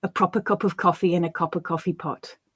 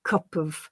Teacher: the way the p from cup attaches itself to the schwa in of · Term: catenation